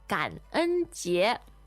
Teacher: 感恩, that's third tone, first tone.